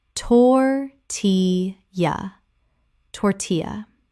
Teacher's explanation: 3 syllables with the L making a Y sound, as in Spanish.